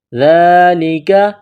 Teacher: کریں گے تو ہا کو سائلنٹ کریں گے، من اللہ، ذالک، ذال کو باریک کرنا ہے، ذال کڑا زبر ذا، کاف کو باریک پڑھنا ہے